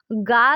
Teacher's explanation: गा जो है वो सघोष और अल्प प्राण है।